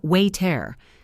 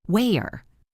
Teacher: we stop the flow of air in our throat completely instead of pronouncing a t sound. Imagine you are holding your breath for a split second. · The t is replaced by a tiny pause. Wayer. It sounds like the word is broken in two. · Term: glottle stop